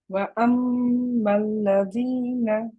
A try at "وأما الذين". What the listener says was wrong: At the moment, your fatha is heavy. You're saying wa amma. It's wa it starts from wa la. La also. La is a little bit on the heavy side. You want to keep the a sound. Wa الذين.